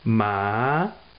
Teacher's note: second tone it rises so it starts lower you know than the first tone and goes up from there